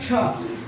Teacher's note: जब इसका उच्चारण हम करेंगे तो ये हो जाएगा क्ष। इसको एक साथ बोलेंगे क और स, कस निकलता है, तो इसका उच्चारण बदल करके हो जाता है क्ष। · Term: संयुक्ताक्षर